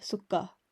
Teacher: it will emphasize the next letter make it twice as strong emphasizes a syllable by making the next letter twice as strong